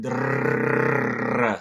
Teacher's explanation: the trilled R, or a lot of people call it a rolled R, that drrrr sound, that machine gun going off in your mouth